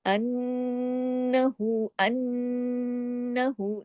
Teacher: नून पे आवाज को थोड़ी देर नाक में छुपाना है, इसको गुन्ना कहते हैं, और नून पे ज्यादा बड़ा गुन्ना होता है।